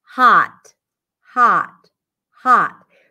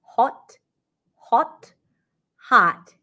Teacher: would be closer to a hot hot hot in American English so there is no rounding of the lips no roundness here